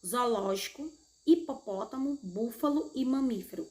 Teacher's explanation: a sílaba tônica é a antepenúltima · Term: proparoxítonas